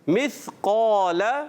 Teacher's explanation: موٹا. یعنی قاف تو موٹا ہوگا مستعلیہ, اس کے بعد والا الف بھی موٹا ہو جائے گا